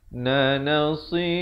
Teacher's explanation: ikhfa hakiki dibaca 2 harakat dengan tebal kerana qaf merupakan huruf isti'la